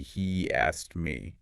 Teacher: you might say he asked me, stressing he.